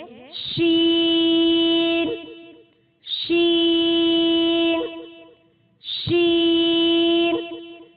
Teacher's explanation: شین، شین، سیم اسی طرح سے ادا ہوگا جیسے ہم نے پیچھے جیم ادا کیا۔ مخرج ہے زبان کا درمیانی حصہ اوپر تالو سے لگنے سے ادا ہوگا